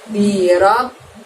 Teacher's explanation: Pada huruf ba di situ ada tasydidnya, maka B-nya bunyi B harus double ya teman-teman, dan cara membacanya harus ditekan dan ditahan. Birob bisa ditahan selama 2 ketukan seperti itu.